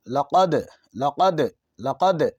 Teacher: یہ دال حرف قلقلہ ہے، ساکن حرف ہے، اس میں آواز لوٹے گی